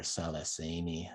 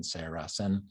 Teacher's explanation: there's no r sound in cherokee So often you'll have the L's instead